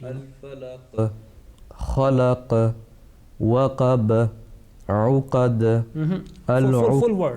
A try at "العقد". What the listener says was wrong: Full word. Not we don't have to break the word. The words start with alif lam. So alif lam should be manifested, should be pronounced.